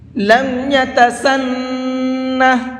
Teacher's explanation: نون کے اندر غنہ کریں گے، یعنی تھوڑی دیر آواز کو ناک میں روک کر کے پڑھیں گے